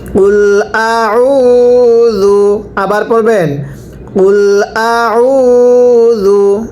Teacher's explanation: এখানে আপনারা স্মরণ রাখবেন এটা হামজা, এটা আইন, আইনটা উচ্চারণের সময় গলার মধ্যে চাপ দিয়ে পড়তে হবে, হামজাটা স্বাভাবিকভাবে পড়তে হবে।